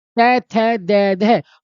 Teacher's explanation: तय को बोलेंगे, जब आप तय को बोलेंगे दांतों से आवाज आएगी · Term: दंत वर्ण